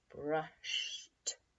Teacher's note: So we think of the ed as saying just the sound T. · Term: the T sound